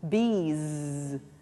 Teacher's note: the Z you can feel at the end of the word has that vibration